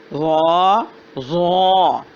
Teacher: ضاد بہت موٹی، نرم اور جماؤ کے ساتھ اس کی آواز ہے